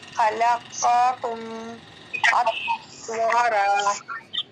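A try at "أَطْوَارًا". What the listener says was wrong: قلقلہ نہیں ہوا اس میں، اتو ایسے پڑھیں، اتوارا، واو کے ساتھ الف ہے تو یہ مدہ ہے، اسے کھینچنا ہے،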